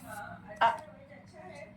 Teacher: इसकी आवाज जो है अब्रप्टली रुक रहा है, साउंड फ्लो नहीं हो रहा और ना ही एयर फील हो रही है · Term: हमजा